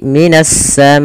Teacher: Yaitu alif lamnya diidghamkan ke huruf sin, maka menjadi minas samai. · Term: idgham syamsiyah